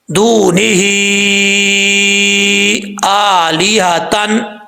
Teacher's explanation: حمزہ کے اوپر کھڑا زبر ہے، ایک الف کی مقدار لمبا کر کے پڑھیں گے۔ اب اس کو آلیہ نہیں پڑھنا، آلی، لام زیر لی، آلی ہا، یہ ہا بھاری ساؤنڈ کے ساتھ پڑھا جائے گا۔